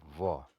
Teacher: लेकिन दंत इसलिए बोला गया क्योंकि दांतों के बीच में से हवा फिर होठों से होकर बाहर आती है, तो दंत ओष्ठ है ये।